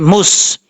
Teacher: سین سیٹی کے ساتھ پڑھا جائے گا کیونکہ یہ حروف صفیریہ میں سے ہے